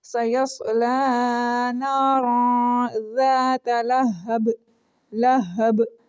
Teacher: اگر آپ با کے اوپر رکیں گے اپنا سانس ٹوٹنے کی وجہ سے، تب اس صورت میں آپ اس کے اوپر قلقلہ کریں گے